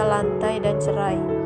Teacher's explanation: Contoh bunyi rangkap vokal seperti A dan I pada kata lantai dan cerai